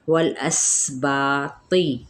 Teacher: لام کو ہم نے ہلانا نہیں، سین پہ سیٹی کو واضح کرنا ہے، با پہ الف مدہ، تا پر ہے، زیر کی حرکت کو یعنی کسرہ کو لمبا نہیں کریں گے۔